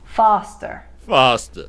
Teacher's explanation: Whereas parts of Queens and Long Island will make it the wider ah vowel sound, as in spa, drama, pasta. That means foster becomes foster.